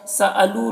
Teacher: لو میں واو مدہ ہے، اسے ایک الف کے برابر کھینچیں گے